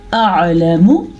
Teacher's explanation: میم کو لمبا نہیں کرنا اور لام کو بھی لمبا نہیں کرنا کیونکہ لام کے اوپر ہے زبر اور میم کے اوپر ہے پیش.